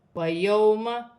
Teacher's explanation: واو ساکن سے پہلے زبر ہے تو واو لین بنے گی، اسے کھینچا نہیں جائے گا